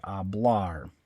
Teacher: you don't stress the first part you don't say oblar you stress the last syllable